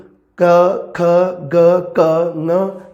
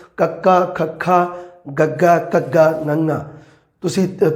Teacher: ਆਵਾਜ਼ ਹੈ ਜਿਹੜੀ ਉਹ ਕੰਠ ਜਾਂ ਗਲੇ 'ਚੋਂ ਆ ਰਹੀ ਹੈ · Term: ਕੰਠੀ ਧੁਨੀਆਂ